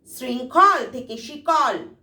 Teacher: অল্প প্রাণী মানে মহাপ্রাণ থেকে অল্প প্রাণী পরিবর্তন হয়েছে। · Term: অল্প প্রাণী ভবন